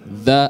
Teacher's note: Kalau dha itu tipis, dha istifal, dha atau tarkik dha.